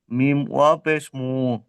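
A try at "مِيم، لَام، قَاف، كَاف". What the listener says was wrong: তবে অক্ষরের টানটা হয়নি, অক্ষরের যে টান সে টানটা রাখতে হবে। যেমন মিম, লাম, কাফ, কফ এগুলো তিন আলিফ করে টান আছে। ওই ওই টানটা রাখতে হবে। যেমন মিম, পেশ মু, লাম, অ পেশ লু। পড়া ঠিক হয়েছে, তবে স্পিড হয়ে গিয়েছে। অক্ষরের টানটা রাখতে হবে, যে টান আছে।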